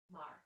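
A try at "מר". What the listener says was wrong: Mar.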